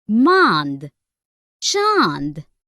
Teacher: अंग इसे अनुनासिक स्वर कहते हैं। इसका उच्चारण नाक और गले दोनों से होता है